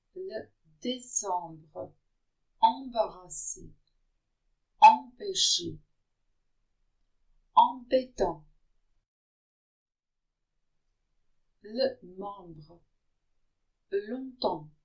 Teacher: If the letters EM are followed by a consonant, they're pronounced en, not an, not am, but en. It is a nasal sound